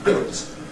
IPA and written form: bɪlt (built)